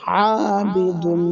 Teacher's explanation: আইন গলার ভিতর থেকে এক আলিফ লম্বা হবে